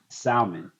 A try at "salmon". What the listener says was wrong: It's salmon. The L is silent. Salmon.